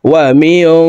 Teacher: গুন্না নুন সাকিনের পর ইকফার হরফ শিন আসছে এই কারণে এই নুন সাকিনকে নাকের ভিতরে লুকাইয়া গুন্নার সহিত পড়তে হবে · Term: ইকফাহ গুন্না